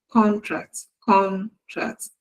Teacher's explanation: in the first word the stress is on the first syllable contract. Contract but then when it that is a noun but then when it is used as a verb the stress is on the second syllable.